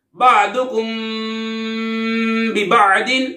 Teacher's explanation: میم ساکن کے بعد بار ہے، حرف بار ہے، اخفاء شفوی ہوگا یعنی غنہ کر کے پڑھیں گے. باعین زبر با، ضاد پیش دو، بعدو، کاف میم پیش کم، بعدکم، با زید بی، باعین زبر با، ببع، ضاد دو زیر دن، ببعد، بعدکم ببعد، اخفاء شفوی یعنی غنہ کر کے پڑھیں گے.